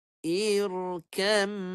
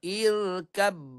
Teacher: idam masuk ke dalam huruf selepasnya secara sempurna makhraj dan sifat jadi bunyi dah tak ada bunyi huruf pertama terus bunyi huruf kedua sahaja dan dengung dua harakat